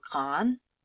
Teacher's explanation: So when you say grand in the masculine form, you can't hear the D.